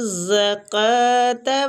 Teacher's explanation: زا بزک ساؤنڈ ہے، اس کو سختی اور سیٹی کے ساتھ پڑھنا ہے · را کو ساکن را کو وہ کی زبر کی وجہ سے پور پڑھیں گے